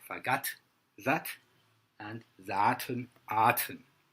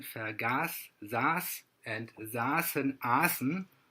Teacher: The German voiceless dental plosive t is shifted to the dental double fricative s as part of the Tenuisverschiebung.